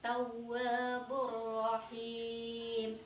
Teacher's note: Di idgham bila gunnah. Cara bacanya cukup memasukkan suara tapi tidak memakai dengung.